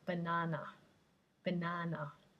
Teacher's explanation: the schwa the unstressed vowel sound which is the most common sound in english